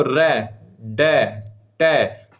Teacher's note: मूर्धन्य व्यंजन होते हैं जो जीव के आगे वाला हिस्सा जब तालु के टच होता है तब आते हैं